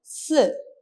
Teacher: നാവിന്റെ ഒരു സൈഡിലൂടെ എന്ത് ചെയ്യണം ആ നിശ്വാസ വായുവിനെ സ്ട്രെസ്സോടുകൂടി പുറത്തേക്ക് വിടുകയാണ് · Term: ഘർഷം